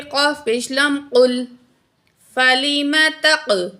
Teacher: قاف کو موٹا پڑھا جائے گا، لام کے ساتھ جوائنٹ کریں گے